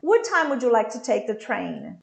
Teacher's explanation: i have one word finished in the consonant and the other word starting in the same consonant i'm going to connect